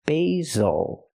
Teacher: Use a long a sound for the first syllable like say and day.